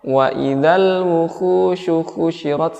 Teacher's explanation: huruf ha yang berdhammah itu dibaca dengan tipis dan bening, ya, jernih. Tidak ada serak-seraknya.